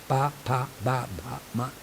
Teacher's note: ಇವೆಲ್ಲವೂ ಹುಟ್ಟುವಂಥದ್ದು ಓಷ್ಠಗಳಲ್ಲಿ, ಅಂದರೆ ಎರಡು ತುಟಿಗಳಲ್ಲಿ. These are called ಲೇಬಿಯಲ್ಸ್ in English. ಲಿಪ್ನಲ್ಲಿ ಹುಟ್ಟೋದು.